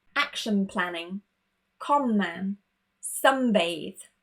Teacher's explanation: If our first word ends in N and our next word begins in M, B, or P, we change it to the M sound